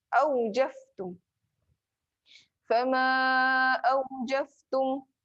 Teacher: Fa adalah huruf bibir. Fa adalah huruf, salah satunya huruf gigi atas bertemu dengan bibir bawah. Jadi gigi atas, gigi bibir bawah.